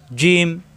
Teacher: জিহ্বার মাঝখানে উপরে তালি হতে লাগবে